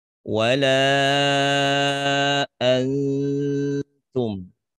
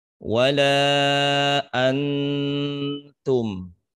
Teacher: ikhfa-nya pada kata antum itu memang hampir menyerupai bunyi n, tapi tidak jelas bunyi n-nya